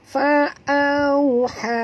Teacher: Ha di sini ha pedas, jadi jangan tebal, ya. Ringan saja. Fa'auha. Panjang 4 hingga 5 harakat kerana pertemuan ha mat ini dengan alif ataupun dengan hamzah, ya.